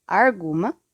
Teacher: Alguma, que se torna arguma, com um rotismo, significando a troca do por ar.